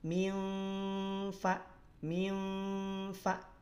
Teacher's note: Nah, dari syafatain, ya, batnis syafah. Jadi dari perut bibir bagian bawah yang nempel dengan ujung gigi seri atas. · Ikhfa awsato secara samarnya dia samar pertengahan. Tidak terlalu lemah, tidak terlalu kuat. Kalau terlalu lemah nanti masuknya ke kategori aqrab. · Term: Makhraj fa